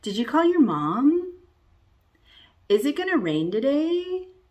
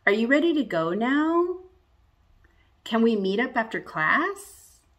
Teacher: on all of these yes no questions i'm going to go up and rise at the end